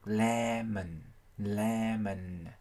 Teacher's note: âm O này họ sẽ chuyển sang âm schwa, là một âm ngắn trong tiếng Anh. Người ta đọc lemon, lemon. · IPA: /ˈlemən/